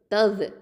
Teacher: இந்த தவ் தால் அப்படிங்கிறது வந்து தரஃபுல் லிசான் நுனினாவை எழுத்து. இது வந்து ஜஹ்ரு ரஹாவா சிஃபத் இருக்குது.